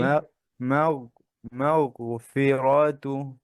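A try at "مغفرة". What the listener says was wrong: আচ্ছা, মাগফিরাতুন বলছি, হ্যাঁ, কিন্তু গয়নের আওয়াজ বন্ধ হবে না, গয়নে কি আছে, রখাওয়া আছে। মাগফিরাতুন।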